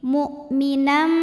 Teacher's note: tertahanu berikutnya Nah karena ada tanwin fathah yang menghadapi huruf mim maka bunyi tanwinnya masuk ke mim mukminam serta didengungkan